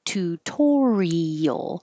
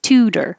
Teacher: the reason this T doesn't change to a D, even though it's between two voiced sounds, the oo and the er, is because it's in the stressed syllable. So the T can only change to a D when it's in the unstressed syllable.